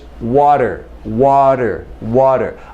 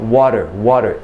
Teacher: my tongue goes up only very briefly for this touch up here on the roof of the mouth.